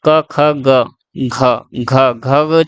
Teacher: क ख ग घ जो है वो गले से हो रहा है। गले से हो रहा है यानी कंठ्य व्यंजन हो गया।